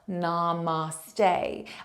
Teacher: so Namaste is the stay the final part of that word the final syllable has more emphasis on it it's also lengthened out